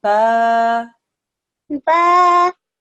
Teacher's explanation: the sound gets stretched out for 2 seconds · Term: Normal elongation